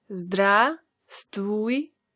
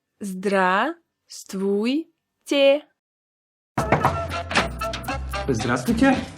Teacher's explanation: You don't need to pronounce a letter V.